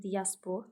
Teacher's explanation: Tələffüz zamanı i və a arasına y samiti əlavə olunur, olur diaspor tələffüz.